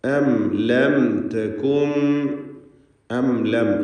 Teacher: രണ്ട് സാക്കിനത്തായ മീമുകൾ ആവർത്തിച്ചു വരുന്നു. രണ്ടിനും ഇൽഹാർ ഷഫവിയാണ്, മണിക്കാതെ വെളിവാക്കണം.